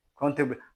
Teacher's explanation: Ao T e o R você fala, né, num som praticamente só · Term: grupos consonantais reais